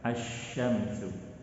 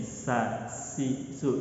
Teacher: Shin haruslah menyebar di dalam mulut, sin tidak, dia langsung keluar. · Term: at-tafashi